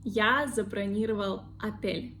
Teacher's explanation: don't forget the first or we pronounce like a because it is unstressed.